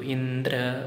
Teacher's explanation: the first part should be a flat pitch, a middle pitch. So indra, only the dra should go up.